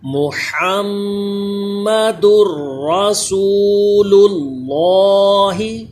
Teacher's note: ہا کا مخرج اس کا خاص خیال رکھیے، سانس کی آواز اس میں آئے اور میم میں غنہ بھی ہو